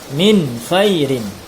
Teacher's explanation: Nun matinya dibaca jelas tanpa dengung. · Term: izhar